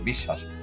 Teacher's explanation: এখানে তালব্যস্বরের সাথে বফলা যুক্ত আছে, এই জন্য তালব্যস্বরটা দুইবার উচ্চারণ হয়েছে